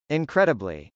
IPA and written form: .ɪnkrˈɛdəbli (incredibly)